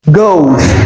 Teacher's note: Note the S that is added to goes is transcribed as Z. That is the voiced alveolar fricative sound, not the voiceless. So it is not goes, but goes.